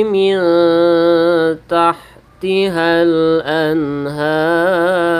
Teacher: ini ikhfa Hakiki maka dibaca samar dan berdengung